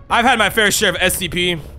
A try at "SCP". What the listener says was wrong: Say the S, please. Really pronounce that S in SCP.